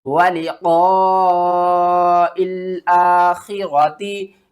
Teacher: یہ جو یا ہے نا، یہ نہیں پڑھا جائے گا، یہاں پر مد متصل ہو رہی ہے، اس کو 5 الف کے برابر کھینچ کر پڑھیں گے